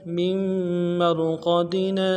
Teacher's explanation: میم کو را کے ساتھ ملانا ہے، را کو موٹا کریں گے، قاف کو موٹا ادا کریں گے